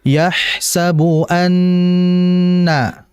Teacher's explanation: Dengungkanlah, tahanlah dengan dengungan pada huruf nun dan mim syuddida. Ketika keduanya bertanda tasydid, maka ditahan yahsabu anna.